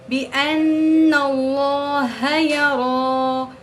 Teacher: لفظ اللہ سے پہلے زبر ہے تو اس کو موٹا پڑھیں گے